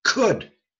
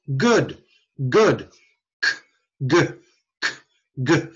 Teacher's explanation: take a K put a voice in it